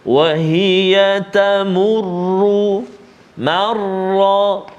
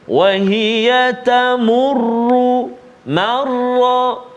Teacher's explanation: Pertama, ra yang bersabdu baris dhammah baris depan, dan marra ra yang bersabdu baris atas. Kedua-dua tempat ini, kedua-dua huruf ra ini kita baca dengan tafkhim tebal.